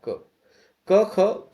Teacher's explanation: क ख कंठस्थ निकलता है। क वर्ग के वर्णों का उच्चारण स्थान कंठ गला है।